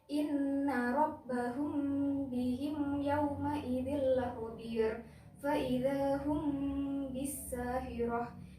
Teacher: mim sukun bertemu dengan huruf ba, dan cara membacanya adalah samar di bibir sepanjang 2 harokat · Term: ikhfa syafawi